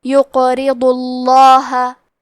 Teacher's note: یقرضو، کیونکہ ضاد پہ پیش ہے لہذا لفظ الجلالہ کے لام کا حکم ہے تفخیم تو ہمیں حرف اللام کو موٹی آواز میں پڑھنا ہے۔